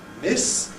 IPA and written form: mɪs (miss)